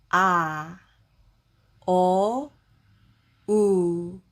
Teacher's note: 입을 크게 벌리면 아 입을 좀 작게 벌리면 어 그리고 여기서 입을 더 작게 벌리면 우가 되죠.